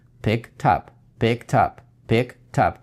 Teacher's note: И последний звук всегда англофоны двигают к следующему слову. То есть, если мы, когда читаем, и у нас в головах, и в мозгах это два слова pick, и потом picked, потом up, то для англофона это будет pick, потом вы берете вот этот звук t и двигаете его к up, tap.